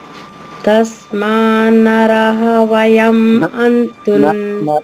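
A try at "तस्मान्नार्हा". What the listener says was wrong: నరాహ కదమ్మా. నార్హ. రా పొల్లుగా చెప్పాలి. హా దీర్ఘంగా. నార్హ. దీర్ఘం అమ్మ, అమ్మ నా దీర్ఘం. తస్మాన్ ప్లస్ నార్హ, తస్మాన్నార్హ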